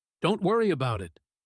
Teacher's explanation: the falling tone on Don't worry about it shows genuine reassurance, a calm closing down of the topic, like he's truly not bothered.